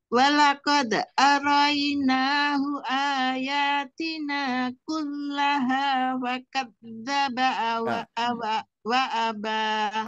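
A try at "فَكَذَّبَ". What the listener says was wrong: Oke, fa-nya masih kurang jelas, Bu.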